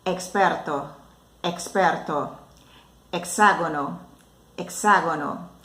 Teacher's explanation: A letra X em espanhol vai ter um som de KS quando o X estiver dentro da palavra, como por exemplo, experto, experto, hexágono, hexágono.